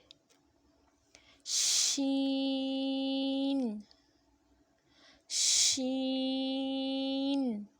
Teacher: زبان کا بیچ جب تالو کے بیچ سے لگے تو شین ادا ہوتا ہے. شین، شین کو بھی کھینچ کے لمبا کر کے پڑھیں گے.